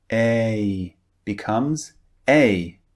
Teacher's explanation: A is actually two vowels pushed together to make one sound.